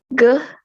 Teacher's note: a velar stop voice sound